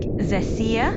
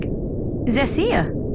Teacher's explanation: it's pronounced like Xecea with the emphasis on the middle syllable